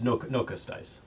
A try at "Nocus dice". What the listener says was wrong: Yeah, kind of like, I think you just breathe a little bit, but you don't say the U at all.